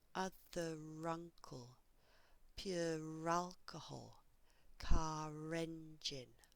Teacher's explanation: So when I say these words on their own, there is no R. I only add a R when I join the words together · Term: R sound